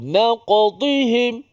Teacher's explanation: Supaya huruf qaf itu dapat dilantunkan dengan selesa, dengan tanpa seperti dibuat-buat. Maka qalqalah ini adalah qalqalah yang sughra. Yang qalqalah yang paling ringan lah. Kita kata sebab dia qalqalah yang berada di tengah-tengah perkataan.